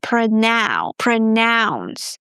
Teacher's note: in the verb form pronounce, the O U is pronounced as ow as in now